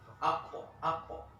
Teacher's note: Coba kalian angkat lidah belakang kalian, paling belakang diangkat. Itulah huruf qaf.